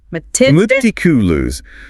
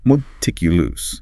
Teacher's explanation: Stress on the second syllable. That first syllable is a schwa sound.